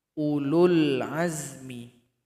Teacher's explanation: Di sini ada huruf waw yang tidak berharokat, maka tinggalkan saja. Huruf sebelumnya dipendekkan.